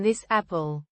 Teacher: the S phon flows right into the vowel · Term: linking